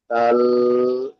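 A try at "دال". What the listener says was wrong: এটা অনেকেই দাল বলেন, তো এটা দাল, এটা ধরলে গুণনা হয়ে যাচ্ছে, আপনার টানটা আসছে না। এই দা, দ এবং লয়ের মাঝখানে টানটা দিতে হবে, বলতে হবে আপনাকে দাল বলে টান দিতে হবে। হ্যাঁ, দাল বলে টান দেবেন।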